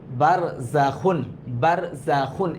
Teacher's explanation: খ গলার মধ্যে একটু খুসখুস একটা ভাব আসবে, আর এটা অনেক ক্ষেত্রে অনেকে এটাকে খা বলে ফেলে।